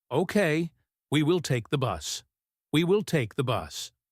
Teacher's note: He stresses will to show he has made a final decision.